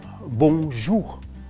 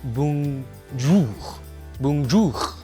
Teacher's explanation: in that word itself, you have a nasal sound, bon, and then you have a slight dry R at the end